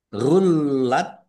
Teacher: Rullat lamnya dibaca double ada tasdidnya. Nah, huruf yang bertasdid itu membacanya ditekan dan ditahan. Ya, ditekan dan ditahan biar tampak doublenya.